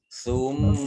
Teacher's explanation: mim tasdid dibaca gunnah atau mendengung, ditahan 2 harokat.